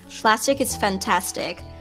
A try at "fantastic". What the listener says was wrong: Like when you say fantastic, you say it like funtastic. It sounds like funtastic, kind of, to me. Fantastic.